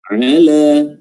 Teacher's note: huruf ain jelas, ya, tenggorokan tengah. La qulubihim, huruf qaf pangkal lisan atau pangkal lidah, ya, bertemu dengan langit-langit lunak paling dalam.